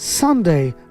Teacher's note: Sunday, সানে জোর, অর্থাৎ 7 বারের নামে সবসময় প্রথম অংশ জোর হবে।